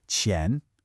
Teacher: It's a second tone, so it's a rising tone. qián. And that initial q sound, this is a classic stumbling block.